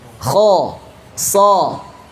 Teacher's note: yang namanya fathah ya, itu harus terbuka. Tidak ada fathah monyong.